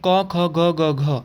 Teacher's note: तो क का उच्चारण स्थान कंठ है।